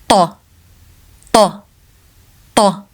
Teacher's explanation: It is a heavy ta sound produced from the back of the mouth with more tension than the English T in table. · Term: Thaa